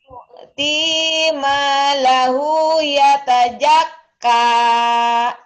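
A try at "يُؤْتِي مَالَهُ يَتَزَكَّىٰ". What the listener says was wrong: Nah, za-nya kurang rapuh. Yatazak. Yatazakka.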